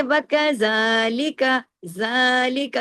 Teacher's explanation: اس لیے کہ اس پر کھڑی زبر ہے، کھڑی زبر الف کے برابر کھینچتی ہے،